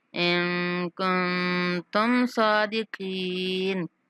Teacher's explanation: ان کن، دونوں نون پر اخفا کریں گے